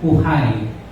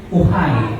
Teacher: nasa second syllable po ang stress, and we will pronounce the word uhay